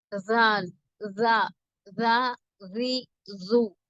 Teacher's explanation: ஜாலுக்கு பாத்தீங்கன்னா வந்து சொல்றப்பயே வந்து காத்தெல்லாம் வரக்கூடாது. சொல்றப்பயே அந்த குரலும் வெளில வரணும். நாக்கு லேசா வைப்ரேட் ஆகும். நம்ம அப்படி சொல்றப்ப லைட்டா வைப்ரேட் ஆகும்.